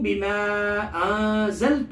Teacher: بما یہاں مد منفصل ہے، الف مدہ کے بعد حمزہ دوسرے کلمے میں ہے، لہٰذا یہاں مقدار 2 یا 4 الف کے بقدر ہے